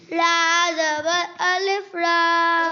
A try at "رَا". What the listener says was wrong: اور را موٹی نہیں پڑھی. زبر را زبر الف را. اونچا.